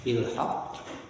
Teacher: Qalqalah kubra, karena huruf qalqalah ada di akhir kalimat dan sukunnya qaf bukan sukun asli tapi sukun karena waqaf.